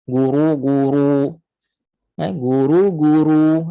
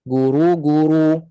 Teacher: lidah kita still naik walaupun kita muncung tu dalam masa sama pangkal lidah naik sebab itu bunyi jadi tebal